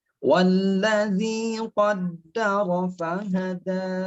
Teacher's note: Wallazi, zi-nya di ujung lidah, jangan digigit, jangan di wallazi, kalau digigit tak keluar suaranya, ya. Jadi di antara gigi ada angin yang melewati di sini.